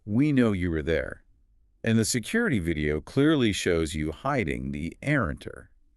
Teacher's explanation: he puts this sharp sudden volume spike on the word hiding.